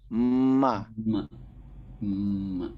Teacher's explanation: Dia berasal dari bibir namun masuk kepada rongga hidung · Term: huruf mim